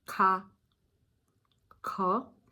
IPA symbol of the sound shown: k